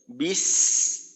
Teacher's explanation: বিস সিনের মাখরাজে গেলাম, সিনের উচ্চারণটা চালু রেখে আওয়াজটাকে বুঝাইলাম। সিনের উচ্চারণ শেষটা হবে আস্তে শেষ হয়ে যাবে, কোথাও ধাক্কা লাগবে না।